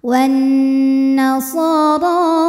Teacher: Wan nasara, huruf ra dibunyikan secara tafkhim karena ra-nya berharokat fathah. Maka ra ini kita panjangkan, kita baca dengan tebal ya. Ra, pangkal lidah kita angkat naik ya.